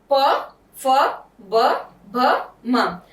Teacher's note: औष्ठव means होठ। इन 5 व्यंजनों को बोलने में हमारे होठ आपस में मिल रहे हैं, तो इन्हें कहते हैं औष्ठव व्यंजन।